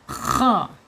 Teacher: dia mempunyai sifat isti'la ya, terangkat lidahnya, gitu ya, terangkat.